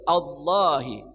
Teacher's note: Allah tebal ya atau taglis memenuhi rongga mulut